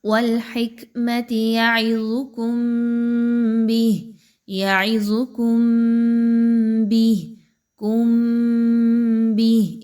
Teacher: میم ساکن کے بعد با کا حرف آ جائے تو اس کو ذرا ٹھہر کے آواز کو ناک میں روک کے ملاتے ہوئے پڑھیں گے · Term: غنہ